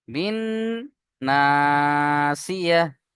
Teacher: বিন এক আলিফ গুন্না হবে এক আলিফ টান হবে